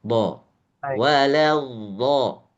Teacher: Jadi huruf tebal itu antara a dan o aksennya lebih ke O.